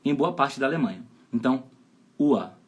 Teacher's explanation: Na época eu não sabia, então eu ia tentar entender por que esse R tem som de A. É porque R, no final de palavras e antes de consoantes, via de regra tem som de A em boa parte da Alemanha